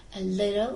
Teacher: In little, the t sound is formed by briefly tapping the tip of tongue against alveolar ridge.